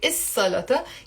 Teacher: you don't pronounce the l sound in the il salaTa. You say is salaTa. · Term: sun letter